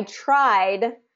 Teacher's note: try has a Voice ending so we're going to put a d ending at the end so it's kind of carrying the voice to the voice and